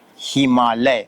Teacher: अ आ में मिल गया तो उसका उच्चारण आ ही होता है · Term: संधि